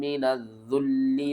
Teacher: لام کے اوپر سختی بھی کریں گے اور دو بار پڑھیں گے